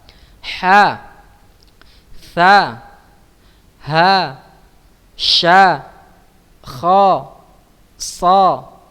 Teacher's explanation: Hamz adalah samarnya suara pada pendengaran disebabkan terbukanya 2 pita suara atau vocal cords dan tidak adanya getaran pada keduanya serta banyaknya udara yang mengalir ketika mengucapkan hurufnya, ya.